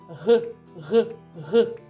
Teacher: кінчик язика опущений але не торкається нижніх зубів бокові края язика притиснуті до верхніх кутніх зубів горло працює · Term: звук г